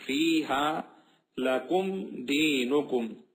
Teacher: میم کے بعد والے حرف کے ساتھ جب ملایا جائے گا تو بالکل صاف طریقے سے پڑھا جائے گا، ناک میں آواز نہیں جائے گی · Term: اظہار